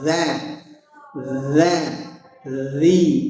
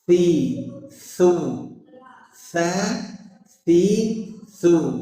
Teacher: ujung lidah ketemu ujung gigi seri atas atau digigit sedikit. Nah, huruf ini saja yang keluar sedikit lidahnya.